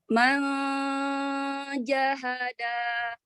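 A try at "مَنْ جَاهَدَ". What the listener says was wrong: Tipiskan lagi nunnya ke depan. Man jahada, syiddah jaharkan lagi. Kuatkan, jelaskan lagi.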